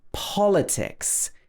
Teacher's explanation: politics is stressed at the beginning